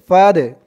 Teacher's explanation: এই দালটা কলকলার হরফ ধাক্কা দিয়ে পড়তে হবে